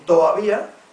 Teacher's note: como caso extremo estaría el todavía, que se convierte en toavía, y este en tabía